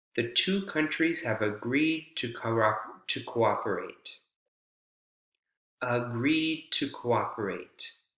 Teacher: You don't hear the D consonant sound. You hear the T, the initial T consonant sound, but the D consonant sound almost goes away. It's almost as if you're saying agree, right?